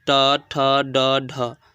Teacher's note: मूर्धन्य, जो मूर्धा से बोला जाता है, थोड़ा सा कह सकते हैं तालु के आगे वाला हिस्सा और दंत के ऊपर वाला हिस्सा कह सकते हैं।